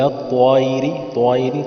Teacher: طائر تو کو موٹا کر کے پر کر کے پڑھا ہے تاکہ تا اور طوا میں تمیز ہو۔